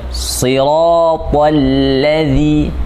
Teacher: dzal lidahnya mesti keluar sedikit.